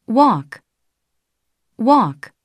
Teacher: 입술이 처음에 W 발음 때문에 입술을 좁게 오므리는 closed rounding으로 시작해서 이 O 발음에서 open rounding으로 변화되는 그런 발음입니다. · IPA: [o]